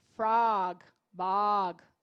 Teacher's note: é entre o O e o A